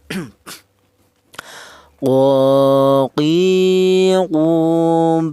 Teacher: Huruf qf ini kya huruf berasal dari pangkal lidah. Pangkal lidah itu lidah bagian belakang itu ditempati dua huruf yaitu huruf qof ini dan huruf kaf.